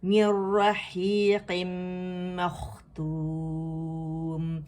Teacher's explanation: زبان کی جڑ نرم تالو سے لگے گی، ادن الحلق اس کا مخرج ہے